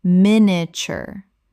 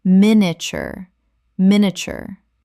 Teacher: Min-i-a-ture. Three syllables in natural speech. The middle collapses dramatically.